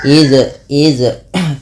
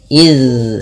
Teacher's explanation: Itu zalnya mengalir bunyinya. Tidak putus dan tidak memantul. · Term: rokhawah